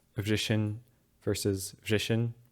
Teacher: the H here after the S is not very clear, so they sound very similar. And you sometimes get that even when the H is clearer.